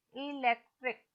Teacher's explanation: इलेक्ट्रिक, इसमें 3 syllable है, इलेक्ट्रिक, तो लेक विल बी स्ट्रेस्ड